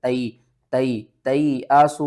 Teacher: یا ساکن سے پہلے زبر ہے، حروف لین ہے، تھوڑا سا آپ نے جلدی سے پڑھنا ہے